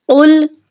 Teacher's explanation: قوف کو ہم موٹا کر کے پڑھیں گے۔ قوف 2 نقطوں والی ہے، لام کے اوپر جزم ہے، لام کے ساتھ ملا کر پڑھیں گے۔